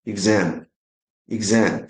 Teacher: The stress must go to the second syllable. So it's exam.